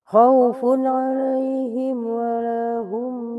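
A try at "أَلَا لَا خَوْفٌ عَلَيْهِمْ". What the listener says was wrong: Dari la dari la khaufun, ketinggalan hurufnya satu.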